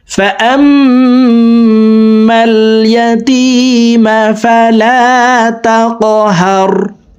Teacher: কফ কলকলার হরফ উপরের দিকে ধাবিত করে ধাক্কা দিয়ে উচ্চারণ করতে হবে